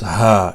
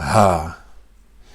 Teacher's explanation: It's not the ha which you say from the top of your throat. It's the ha which comes from the bottom of your throat or your chest or stomach